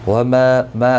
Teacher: ما الف مدہ ہے، ایک الف کی مقدار کے برابر کھینچ کر پڑھیں گے